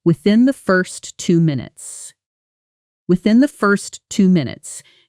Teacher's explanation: Notice how within the almost blends into one soft sound. The the barely separated from the word before. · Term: connected sounds